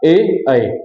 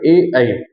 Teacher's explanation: कंठ और तालु दोनों के सहयोग के उच्चारित होने वाले स्वर को हम क्या कहते हैं, कंठ तालव्य।